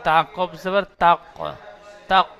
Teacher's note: হরফে কলকলা 5টি অক্ষরের মধ্যে একটি অক্ষর কফ, তাই কফকে কলকলা করব